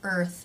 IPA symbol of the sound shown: ɝː